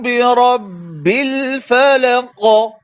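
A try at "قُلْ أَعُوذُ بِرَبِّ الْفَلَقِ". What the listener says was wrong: बिरब्बिल फलक। कुल फलक। फलक ऐसा हो रहा है जैसे कि काफ के आखिर में तशदीद है, हालांकि इसको तशदीद नहीं है।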